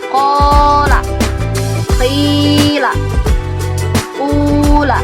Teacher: Nah, itu semua merupakan huruf mad tabi'i. Dihukumi mad tabi'i panjangnya 2 harokat atau 2 ketukan.